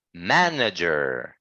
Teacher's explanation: our voice needs to be like uh higher on the first sound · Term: first syllable